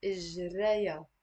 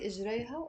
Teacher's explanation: notice here the ha, I'm not pronouncing it. It's silent.